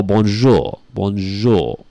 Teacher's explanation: the aw is so nasal like francais